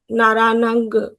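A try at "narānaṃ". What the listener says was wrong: Naranang. Just no, don't say nga. Naranang.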